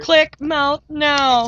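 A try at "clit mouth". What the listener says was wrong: It's clit, not click.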